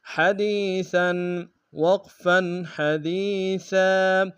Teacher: ہا گہرائی سے ادا کریں گے، دال کو یا کے سامنے گے، مدہ ایک انداز میں کھینچیں گے، سا کے اوپر تنوین غنہ کریں گے۔